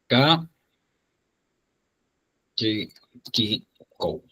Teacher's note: Va a sonar como es una oclusiva velar sorda, o sea, va a sonar igualito que en castellano.